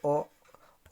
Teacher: ओ बोलने से नाक का प्रयोग नहीं हो रहा